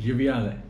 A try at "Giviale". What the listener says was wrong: You're saying Ale. It's not Ale.